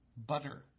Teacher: the tip of your tongue tends to tap that ridge behind your teeth